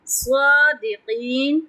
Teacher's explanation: صاد پہ تفخیم کریں گے، لمبا کریں گے، اور قاف پہ تفخیم کریں گے اور لمبا کریں گے